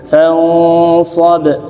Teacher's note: Ikhfanya tebal coba, tapi tipis dulu fa-nya